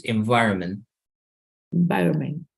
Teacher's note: the last T is not necessary to pronounce